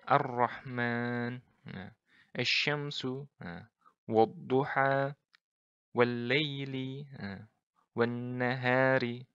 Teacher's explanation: jadi lamnya melebur ke huruf setelahnya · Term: lam ta'rif syamsiyah